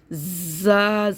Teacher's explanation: زا نہیں پڑھنا ہمیں، زا سیٹی کے ساتھ پڑھنا ہے، کیونکہ سیٹی والا حرف ہے